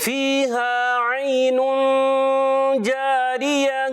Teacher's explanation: غنہ کی ادائیگی ایک الف پورا